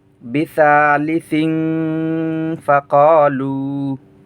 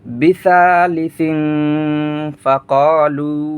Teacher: এখানে সিং গুন্না হবে, ইখফা গুন্না, তানবিনের পরে ফা আসছে।